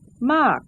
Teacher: is closed with a long vowel, therefore falling tone